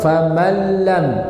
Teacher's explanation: nun sukun bertemu dengan apa lam itu lam maka ini enggak menyisakan sama sekali gunah